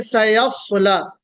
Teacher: स इसमें सीटी ज्यादा बजेगी, स्वाद इसमें इस्तिला की सिफत है, सीटी कम बजेगी